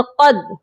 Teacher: قاف کو موٹا کریں گے اور دال مشدد کے ساتھ سختی سے ملائیں گے